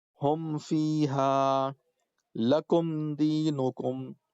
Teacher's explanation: تو میم ساکن کے بعد با اور میم، یہ میم ہے یہ با ہے، تو میم اور با کو چھوڑ کر کے جو بھی حرف آ جائے گا تو ایسی صورت میں ناک میں آواز نہیں رکھیں گے بلکہ جلدی سے پڑھیں گے، آگے بڑھیں گے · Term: اظہار